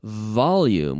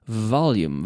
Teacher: volume with a nice V vibrating my lips volume vibrating activating the vocal chords okay the V is like